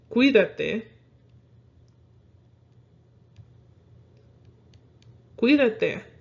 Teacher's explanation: you're going to focus more on the qui part of cuídate